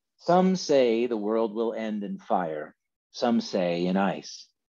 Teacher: This is pure iambic rhythm. It's unstressed, stressed all the way down, even though he breaks it up into different lines, even though he has different number of syllables in each line.